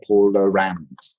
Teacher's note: Because British English doesn't do an R unless it's before a vowel.